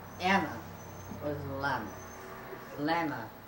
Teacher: he puts L on everything